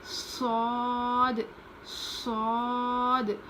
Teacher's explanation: صاد کو کیسے پڑھیں گے؟ زبان کی نوک نیچے کے دانت میں لگا کر پڑھیں گے. صاد میں تھوڑی سی موٹی آواز ہوتی ہے.